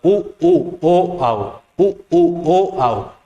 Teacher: जैसे अगर मैं कहूंगा उ उ ओ आओ, उ उ ओ आओ, तो वहां हमारे ओष्ठ जो है वो ओष्ठ की जो आकृति है उ उ ओ आओ बोलते हुए गोल हो जाती है। ओष्ठ की आकृति वृत्त का रूप ले लेती है। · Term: वृत्तमुखी